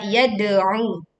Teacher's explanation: pantulkan dal sukun dengan suara yang kuat